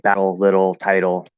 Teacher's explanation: the flapped t is if it's spelled with a t it doesn't matter it's the exact same sound as what we call the flapped d · in American English, we have a flapped D